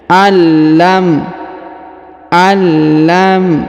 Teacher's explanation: huruf nun sukun bertemu lam bertasdid maka Nun sukunnya melebur menghilang ke huruf lam yang berharakat tasdid Ya ditahan dan ditekan allim ya jadi lam Nun sukunnya tidak